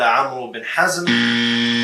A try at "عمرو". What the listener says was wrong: It's Amr bin Hazm. Amr, not Amru. The waw is silent, ya jahil.